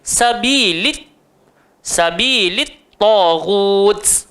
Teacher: atas ta tu ada sabdu, kena tekan